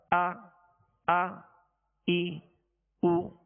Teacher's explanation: اور اس بات کا بھی خاص طور پہ خیال رکھیے گا کہ حمزہ ساکنہ، حمزہ میں ویسے بھی اس میں سختی ہے، جھٹکا ہے، اور اس کو ضغطہ کے ساتھ یعنی جھٹکے کے ساتھ ادا کیا جاتا ہے. جیسے حمزہ زبر آ ای او، ویسے اس میں سختی ہے، جھٹکا ہے.